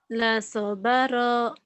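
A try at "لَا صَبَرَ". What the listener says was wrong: La-nya panjang kan ada alif la-nya. La sobara. La sobara.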